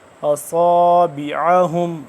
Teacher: صاد موٹا پر پڑھیں گے، سیٹی کی آواز موٹا کر کے